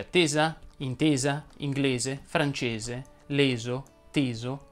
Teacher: vanno pronunciate con la è chiusa